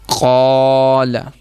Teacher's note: اگر الف سے پچھلا حرف ہم نے باریک پڑھا ہے تو پھر الف کو بھی باریک پڑھیں گے۔ اب دیکھیں اس میں قاف موٹا پڑا ہے تو پھر الف کو بھی ہم موٹا ہی پڑھیں گے اور لام کو باریک پڑھیں گے